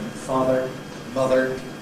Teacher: I would argue again underlyingly it’s [ər], and they coalesce into this syllabic [r̩] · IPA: [ˈfɑːðr̩]